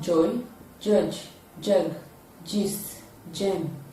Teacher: when it is produced the tip of the tongue is raised to the alveolar region the body of the tongue is raised to the add pallid